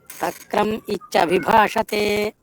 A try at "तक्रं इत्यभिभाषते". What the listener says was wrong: नहीं तक्रम नहीं बोलना है, फिर अनर्थ हो जाएगा, तक्रं इत्यभिभाषते,